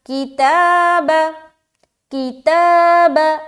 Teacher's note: تا میں کھینچیں گے، کی کو جلد اور با کو جلد